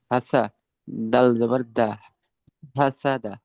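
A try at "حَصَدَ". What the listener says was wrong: সিনটা চিকন হবে হাসাদা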